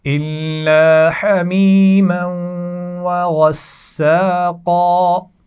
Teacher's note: حمیمہ یہاں پر ایک تو یا مدہ ہے پہچان کے ساتھ، آپ جانتے ہیں، اور میم کو ہم واو کے ساتھ جب ملا رہے ہیں تو یہاں غنہ بھی کیا جا رہا ہے. وغساقا، غین موٹا پڑا جائے گا، سین کو سختی سے ادا کریں گے اور قاف کو موٹا پڑا جائے گا